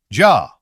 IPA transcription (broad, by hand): dʒa